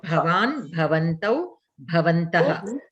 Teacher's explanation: The bha is Mahaprana bha. So you have to use the Mahaprana when you are pronouncing.